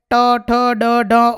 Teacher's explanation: આ બધા મૂર્ધા સ્થાનથી ઉચ્ચારાતા વર્ણો છે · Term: મૂર્ધન્ય